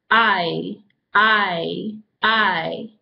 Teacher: when we say I you'll notice the mouth opens just like it's saying e but it closes back down I I I okay so let's practice in three repetitions with